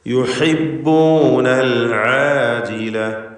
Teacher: ഹ ഐന് തുടങ്ങിയ അക്ഷരങ്ങൾ രണ്ടും തൊണ്ടയുടെ മധ്യമാണ് മഖ്റജ്, അത് വ്യക്തമായി ഉച്ചരിക്കുക.